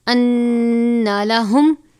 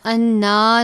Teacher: پڑھیں گے۔ انا لہم، انا اس کو ہم لمبا نہیں کرنا، غنہ کریں گے، نون مشدد ہے لیکن لمبا نہیں کرنا ، انا نہیں پڑھنا، انا ساتھ ہی لاہم پڑھ دیں گے،